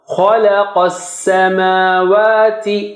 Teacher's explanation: Kha is high and Qaf is also high, but Lam is low.